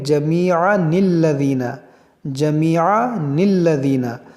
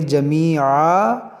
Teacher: اگر ملا کر پڑھیں گے تو پڑھیں گے جمیعا للذین، اور اگر رکیں گے تو اس کو پڑھیں گے جمیعا، اور پھر اس نون کو نہیں پڑھیں گے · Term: نون قطنی